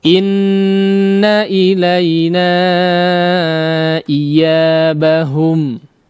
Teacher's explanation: meskipun tidak betul-betul menekan seperti bertasydid ya, tapi iya-nya harus terdengar betul-betul huruf ya ya